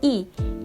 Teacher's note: Kemudian, bunyi vokal I, di mana posisi lidahnya berada di depan dan posisi rahangnya berada di atas, yang mana itu berarti mulutnya cenderung tertutup